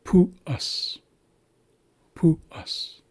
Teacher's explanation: So this is the default U sound, which is oo. We have the acute accent on top of the U here. So this tells us we're starting at a high tone.